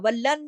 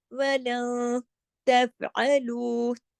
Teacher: رہا ہے، نون ساکن کے بعد تا آ رہا ہے، اخفا ہو رہا ہے، اظہار نہیں ہو رہا